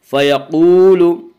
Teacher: واو مدہ کو 1 الف کے برابر کھینچ کر پڑھیں گے۔